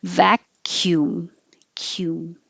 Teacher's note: It doesn't look like it, but the C sounds like a K, and then there's a Y.